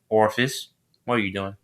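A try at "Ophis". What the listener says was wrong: Office, not Orpheus. Office. Office, not the R. Just remove the R.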